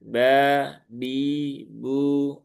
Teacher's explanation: dia tidak memiliki sifat hames ya. dia sifatnya jahir, maka ringankan saja